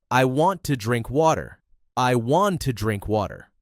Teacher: Your tongue stops at the top of your mouth instead of fully pronouncing the T. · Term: Softening the T